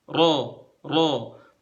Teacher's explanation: dibentuk dengan mempertemukan ujung lidah ujung lidah dengan gusi yang pas di belakangnya gigi seri atas